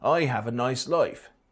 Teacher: the rounding of the price vowel